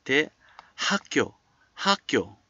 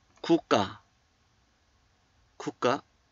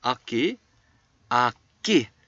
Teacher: 기역, 그 is pronounced as a 쌍기역